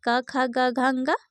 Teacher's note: कंठ जो स्थान है इसके वर्ग में क वर्ग आते हैं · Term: कंठ वर्ण